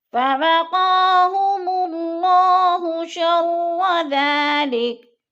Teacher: قا کے اوپر کھڑی زبر ہے، اس کو تھوڑا سا کھینچ کر پڑھیں گے